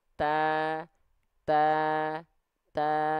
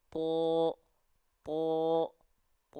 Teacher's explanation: ketika huruf ta berharakat fathah karena dia adalah tipis maka vokal a yang keluar